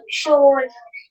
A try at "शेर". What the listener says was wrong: नहीं, शोर नहीं है। देखो ये वाला है श, है ना, ये श है, ये श हुआ। श के ऊपर एक मात्रा लगी, तो क्या हो गया, शे हो गया,